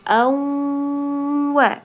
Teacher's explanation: tanwin ya bertemu dengan waw, maka dibaca dengung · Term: idgham bi gunnah